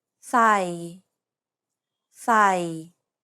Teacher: It's pronounced low and steady. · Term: low tone